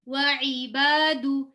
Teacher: Letter عین, وعباد, عین کا مخرج آپ سب کو معلوم ہے. عین کا مخرج حلق, مڈل آف دا تھروٹ, حلق.